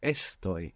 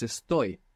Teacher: this verb is the only verb in the entire Spanish language that doesn't have the accent on the penultimate syllable in the present tense. So it's not estoy, it's estoy.